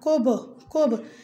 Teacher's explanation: حروف قلقله چې مینځ کې راشي دا کوب کوب، نو دې ته قلقله صغرا ویل کېږي